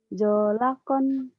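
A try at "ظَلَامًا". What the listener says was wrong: Bukan zo. Zalakon. Nggak ada yang panjang. Zalakon. Zalakon.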